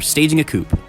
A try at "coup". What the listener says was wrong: It's pronounced coup, you don't say the P at the end.